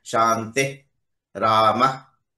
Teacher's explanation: So Visarga pronunciation should be strictly speaking Shanti, Shanti, Shantihi, Rama. It's not Ramaha, Shantihi. There is no he there. Visarga, strict pronunciation is Shanti, Rama, like that.